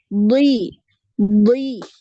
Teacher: dia termasuk huruf yang lebih tebal ya maka ketika kasrah pun dia tebal